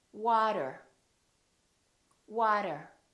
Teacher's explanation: the T sounds more like a D sound, or what we call a very fast D